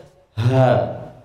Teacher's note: Pita suaranya bagaimana? Terbuka lebar sehingga suaranya kan jelas.